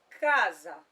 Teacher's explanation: Entre duas vogais, se eu só tiver um S, ele vai ter som de Z. Então, para eu ter o som do SS, no caso, o som do S, na verdade, entre duas vogais, eu vou precisar utilizar o SS.